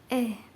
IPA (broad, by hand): e